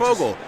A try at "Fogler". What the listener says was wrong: how do you say his name? But it's got an R at the end. it's not Fogel because there's an R at the end, so it might be Fogler.